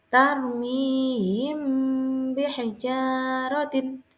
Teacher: Cara membacanya adalah suara yang samar antara mim dan ba pada bibir kemudian ditahan. Kira-kira 2 harokat seraya mengeluarkan suara ikhfa dari pangkal hidung. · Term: ikhfa syafawi